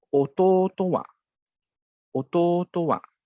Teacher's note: the wa will be read with a low pitch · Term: odaka gata